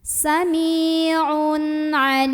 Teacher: Maka bacanya jelas ya. Jadi kalau asalnya tanwin itu bunyi nun sukun an, maka tetap an dan tidak ditahan. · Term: idhar halqi